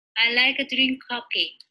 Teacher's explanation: she does not have a clear R. She in fact replaced that with a light L